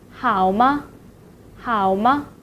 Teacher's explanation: So next part we'll talk about the neutral tone. Neutral tones in Mandarin has no mark. It is short and light, like you knock the door.